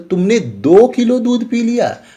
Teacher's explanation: वाक्यांत में किंचित अर्थात थोड़ा सा आरोही सुर रहता है